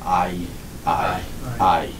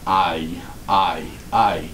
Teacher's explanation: your jaw and your tongue start at the lower Central position for the alpha ah and it rapidly Glides to or toward the high front position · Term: diphthongs